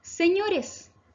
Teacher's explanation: Su sílaba tónica está en la penúltima sílaba ño y como termina en s, no lleva tilde.